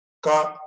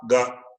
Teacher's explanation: Ka is unvoiced, whereas Ga is voiced.